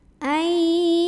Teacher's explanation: Karena ada nun sukun bertemu dengan huruf ya, maka cara baca nun sukunnya adalah dilebur ke huruf ya, masukkan. Jangan dibaca lagi nunnya, ai langsung sambil dengung. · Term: idgham bil gunnah